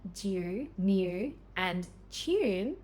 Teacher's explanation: Australians often insert this Y sound after certain consonant sounds